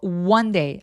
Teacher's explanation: one day 아니고 one day. 앞에 W가 있는 것처럼 입술을 쭉 내밀어서 시동을 걸어서 또렷하게 소리 내면 더 자연스럽습니다